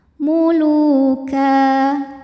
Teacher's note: sebab ada baris tanwin fathah yang diwakafkan maka cara membacanya adalah tanwinnya bunyi n-nya hilang ya jadi ka dan panjang dua harakat · dengan mad thi'i zohiri sebab ada wau sukun didahului baris damah maka huruf L panjang dua harakat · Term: Mad iwad, mad tabi'i zahiri